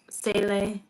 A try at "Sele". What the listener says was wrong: instead of saying the C, you actually have to say the click word.